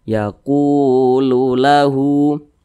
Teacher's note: Kemudian posisinya tepat berada di belakang huruf wa sukun, maka huruf qaf dibaca panjang. Yaku, matobi'i panjangnya 2 harokat atau kira-kira 2 ketukan